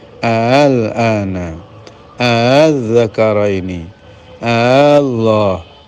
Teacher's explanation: Wajah yang kedua adalah hamzahnya 2, tapi hamzah yang kedua ditashil